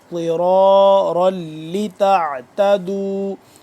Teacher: ضاد زیر ضی ضاد کا مخرج آپ کو بتا دوں کہ زبان کی بائیں کروٹ کو اوپر والے جو داڑھ ہیں ان کے ساتھ جب ٹچ کریں گے تو ضاد صحیح طرح سے ادا ہوگا